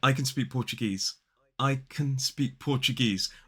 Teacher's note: the verb speak is the more important verb and therefore we stress that verb